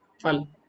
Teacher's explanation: उर्दू का फ होता है उसमें क्या होता है जो हमारा होट है ना व दांत के नीचे आता है आप बोलो फल फल फल है ना तो यह सब गलत